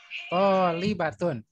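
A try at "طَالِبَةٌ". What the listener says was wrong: Tolibatun. Linya jangan panjang ya. Tolibatun.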